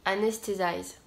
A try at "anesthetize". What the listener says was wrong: ok, donc tu te places un petit Z. Le T en Tsum Tsum, il est passé en Z. Anesthetize.